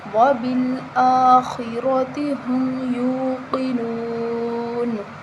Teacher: نون وقف کی صورت میں ساکن ہو جائے گی